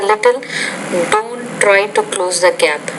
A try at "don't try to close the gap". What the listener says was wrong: Notice the word don't, not try, but don't try. So be careful of the R. The R consonant in a consonant cluster, you pronounce it a little bit, how do I say, too strongly. So it's don't try to close a gap, not don't try to close a gap.